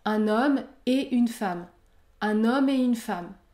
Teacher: on ne prononce pas le T à la fin du mot et